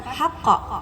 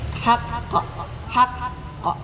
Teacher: Karena ada tasdid tahan dulu sebentar.